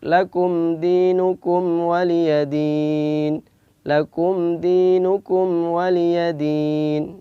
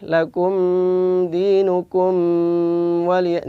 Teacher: Mim sukun bertemu selain dua huruf tersebut maka dibaca izhar syafawi. Izhar artinya jelas, mimnya jelas, tanpa ada dengung, syafawi adalah keluar dari dua bibir.